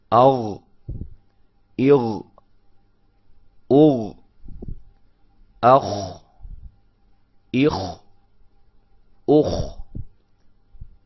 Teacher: غین، خو، یہ آپ کو محسوس ہوگا جب آپ اس کو نکالیں گے تو یہ آپ کے منہ کے قریب والے حلق کے حصے سے ادا ہوتے ہیں